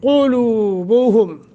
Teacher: لو حروف مدہ بنتا ہے، واو ساکن ما قبل ضمہ، 1 سیکنڈ کی مد کریں گے۔